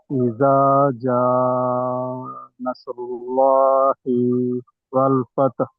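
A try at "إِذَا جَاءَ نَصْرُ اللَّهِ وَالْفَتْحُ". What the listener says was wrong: మీరు ఒక్క తప్పు చేశారు. హంజా ఫథా ఆ చదవలేదు. హంజా ఫథా కూడా చక్కగా చదవాలి.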